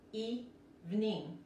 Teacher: en este caso, los dos I se pronuncian como la I de español.